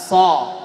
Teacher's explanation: shad, makhrajnya sama dengan sin, tapi huruf shad tebal ya, isti'la, so ya, mulutnya bulatannya sepertiga